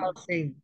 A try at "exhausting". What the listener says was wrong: Exhausting. Yeah, it's silent H. You don't say exhausting. We say exhausting.